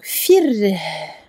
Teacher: il faut faire durer un petit peu le ha à la fin. Ne pas couper net. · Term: le ha est sakin